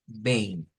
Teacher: vein es esa nasalización que debemos de hacer sobre esa terminación de E y M